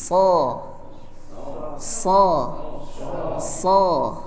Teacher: kalau Sin posisi lidahnya normal kalau sad posisi lidahnya lidah terangkat ke atas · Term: huruf Shad